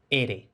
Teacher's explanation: la letra R inicial es percusiva, lo que tradicionalmente se ha llamado vibrante simple